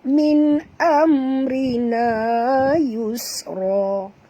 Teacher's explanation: Ra terki, ra tipis dengan ra baris bawah. Kemudian na mat asli, yus bunyikan safir pada sin, kerana sin itu mati.